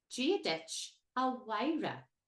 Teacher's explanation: The MH here produces a W sound.